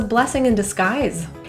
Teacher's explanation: In the word disguise, the final S sound is actually pronounced as a Z, a voiced Z.